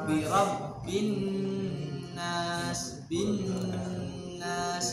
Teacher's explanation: dibaca gunah dengan tempo yang panjang. Harus memenuhi 2 poin, menekan tasydid dan gunah. Jadi panjang. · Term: Nun bertasydid